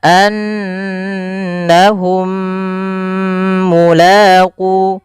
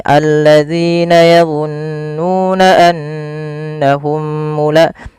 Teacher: Idgam mimi ini cara membacanya mim yang pertama masukkan yang mim kedua kemudian ditahan. Maka annahum mulaqu ditahan dulu. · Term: idgham mimi